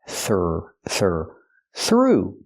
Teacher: use the th with no voice just air f plus the r th th through then the oo sound